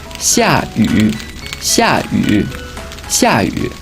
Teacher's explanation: 下 fourth tone. 雨 third tone.